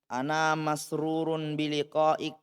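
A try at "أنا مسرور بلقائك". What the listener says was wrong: jangan disukun. Baca semua.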